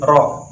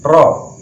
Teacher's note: makhraj yang berada di ujung lidah tetapi sedikit masuk sehingga bertempat di punggung lidah, yaitu ada huruf ro.